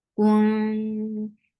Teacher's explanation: This is ikhfa and this ikhfa is light. When you are on kaf, you are circling your lips for dhamma. Kun for dhamma, circle your lips.